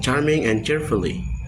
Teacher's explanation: Ch, as in charming and cheerfully, is a voiceless post-alveolar affricative.